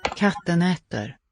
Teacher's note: there really is an extra beat of time when it's a double consonant.